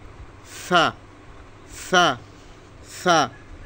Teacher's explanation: সা সা নরম করে, সা সা সা, জিহ্বার আগা সামনের উপরের দুই দাঁতের আগার সঙ্গে লাগায়, জিহ্বার আগা সামনের উপরের দুই দাঁতের আগার সঙ্গে লাগাইয়া তিনটা মাখরাজ।